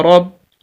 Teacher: ہاں اگر را کے نیچے زیر ہو تو پھر را باریک پڑھا جاتا ہے، یہاں پر زبر ہے تو اس بنا پر ہم را کو موٹا کر کے پڑھیں گے